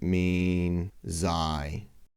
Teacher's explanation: notice that the S is pronounced as a voiced Z not the unvoiced S because the N which is before it is voiced as well